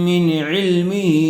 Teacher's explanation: نون ساکن کے بعد حروف حلقی میں سے عین آیا ہوا ہے، اس لیے بغیر گننے کے جلد اظہار کر کے پڑھیں گے